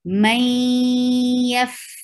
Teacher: With gunna, you are keeping the sound in your nose too, and you are merging meem into ya, and the sound of noon is merged in. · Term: idgham